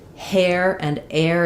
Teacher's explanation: You want to make sure you're letting some windy H sound come out in the back of the throat.